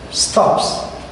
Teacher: When we add the S with he, with the third person singular, we pronounce it as a s